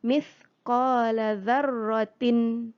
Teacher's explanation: ada hukum apa disini tanwin bertemu Ho hukum izhar halqi izhar maknanya jelas bunyikan tanwin dengan jelas